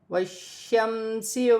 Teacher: شین مشدد ہے، مشدد حرف 2 مرتبہ پڑھا جائے گا اور جماؤ کے ساتھ پڑھا جائے گا